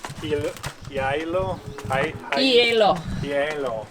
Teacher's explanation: The H is silent, but it's like two vowel sounds at the beginning.